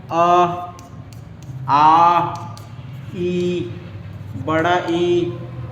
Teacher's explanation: अवृत्तमुखी में जो हमारा ओठ जो है, ओठ हमारा नहीं होता, वृत्ताकार नहीं होता।